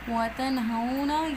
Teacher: नून साकिन के बाद हरूफ हल्की में से हा आ रहे हैं, और ये वाला जो हा है ये अदा होता है अक्सुल हलक से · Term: इज़हार